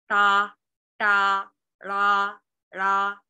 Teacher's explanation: So for example, this sound and this sound, the retroflex plosive sounds, English does not have it